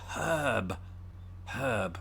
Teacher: we don't pronounce the r in in herb as brits either unless you're from the west country you might then and you · i pronounced it with an h at the beginning